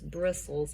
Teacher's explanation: So it's bristles, and we just don't say the T sound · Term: silent T